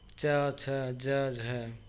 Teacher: जिन व्यंजनों के उच्चारण में स्पर्श का समय अपेक्षाकृत अधिक होता है और उच्चारण के बाद वाला भाग संघर्षी हो जाता है, उसे स्पर्श संघर्षी कहलाते हैं।